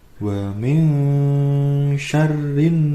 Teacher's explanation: hukum bacaan ikhfa ya teman-teman, atau dibaca samar dan juga mendengung